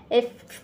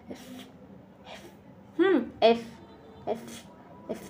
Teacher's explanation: এফ হ্যা এফ পুরোপুরি ফত উচ্চারণ হবে না। প এবং ফ এই দুইটার মাঝামাঝি একটি উচ্চারণ হবে।